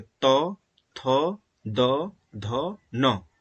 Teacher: इसको उच्चारण करते समय जिह्वा दंत मतलब दांत को स्पर्श करेगी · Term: त वर्ग